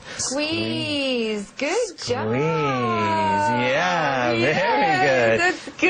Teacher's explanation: she likes that intonation Rising intonation